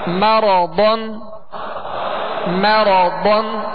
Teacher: ضاد میں ہونٹوں کو گول نہیں کریں گے، ضاد کو پر پڑھیں گے